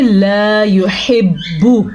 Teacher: تو ہم اس کو پڑھیں گے لا يحب، با پیش بو، با کو لمبا کرنے کی غلطی آپ نے بالکل بھی نہیں کرنی